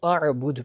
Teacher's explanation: وقف کریں گے تو اس کو اعبد پڑھیں گے، آخر پہ دال پہ قلقلہ ہوگا۔